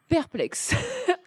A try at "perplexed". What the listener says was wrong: perplexed at the D. Perplexed.